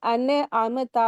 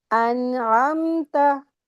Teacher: تو سب سے پہلا ورڈ دیکھیں، سب سے موسٹ غلطی یہاں پہ ہوتی ہے سورہ فاتحہ میں، وہ انعمتا پڑھتے ہیں، جبکہ عین حروف حلقی حلق سے ادا کریں گے، نون کی آواز کو کلکلا بھی نہیں کریں گے